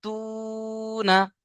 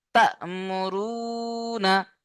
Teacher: সাকিন ওয়ালা হামজাকে ঝাটকা দিয়ে বা ধাক্কা দিয়েই পড়তে হয়।